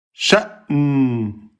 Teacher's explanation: Hamza soukoun, on ferme les cordes vocales.